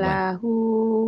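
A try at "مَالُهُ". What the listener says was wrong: Lu, lu, lu sering lupa nih. Lu bukan la. Maluhu, Baca Quran ujungnya jadi pendek.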